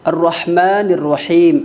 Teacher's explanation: ہا کا مخرج یہ ہے کہ حلق کے درمیانی حصے سے اس کو ادا کیا جاتا ہے